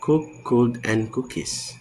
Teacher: K is voiceless velar plosive, found in words like cook, could, and cookies.